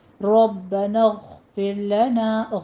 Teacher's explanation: غین کی آواز آپ نے ادنا حلق سے ادا کرنی ہے۔ پھر میں را باریک پڑھی جائے گی، لنا میں الف مدہ پورا ادا کیجئے، ٹھیک ہے؟